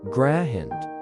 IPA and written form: ɡraɪnd (grind)